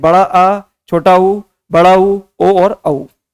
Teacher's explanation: जिन स्वरों के उच्चारण में जीभ के पीछे वाला भाग सक्रिय होता है। जीभ के पीछे वाला भाग से तात्पर्य क्या है, जो लास्ट वाला जो भाग रहता है जीभ का वो अत्यधिक सक्रिय होता है, उसे हम क्या कहते हैं, पच्च स्वर कहते हैं।